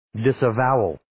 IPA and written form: ,dɪsə'vaʊəl (Disavowal)